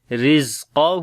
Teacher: رزقہ را کو باریک پڑھیں گے، زیر ہے اس کے نیچے، اور زا کو تھوڑا سا سخت پڑھیں گے اور قاف کو موٹا پڑھیں گے، ہو کو لمبا کریں گے. رزقہ زا کے اوپر جو ہے وہ صفت رخاوت ہے، آواز جاری ہوگی